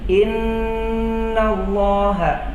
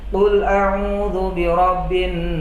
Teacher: didengungkan dan ditahan selama dua harokat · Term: Nun tasydid